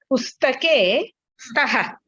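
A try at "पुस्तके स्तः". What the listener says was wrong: Pustake staha. Correct. Very good.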